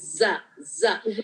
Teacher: ज़ में जबान अंदर की तरफ नीचे लोअर इंसाइजर पे टच होगी